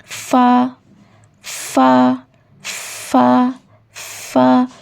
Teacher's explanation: जब आपका सामने के ऊपर वाले जो दो दांत है उसका किनारा नीचे वाले जो होंठ है, लोअर लिप, उसके अंदर वाला जो हिस्सा होता है, वेट पार्ट, गीला हिस्सा, उससे लगता है तो हर्फ फा अदा होता है